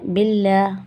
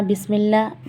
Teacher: ایک چیز بتانا بھول گئی میں، یہاں لام جلالہ ہے، باللہ باریک نکلے گا لام. یہاں بسم اللہ باریک نکلے گا لام